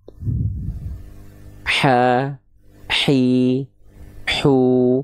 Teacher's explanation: H kecil itu dilafalkan dari bagian katup epiglotis yang ketika dia berkontraksi dan kita lafalkan, dia akan menyempit ke dinding tenggorokan.